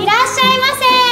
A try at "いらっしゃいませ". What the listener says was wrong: も っ と 大 き い 声 出 し て 。